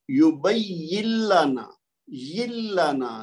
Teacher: لام کی آواز ہمیں آئے گی، نون کی آواز نہیں آئے گی، یہ اس لیے اس کو کہتے ہیں ادغام بلا غنہ۔